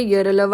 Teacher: अंतस्थ वर्ण को प्रोनाउंस करोगे तो उसमें आपका स्पर्श जो होता है ना वो थोड़ा सा कम होता है। इतना ज्यादा नहीं होता जितना ये स्पर्श व्यंजन में हो रहा है।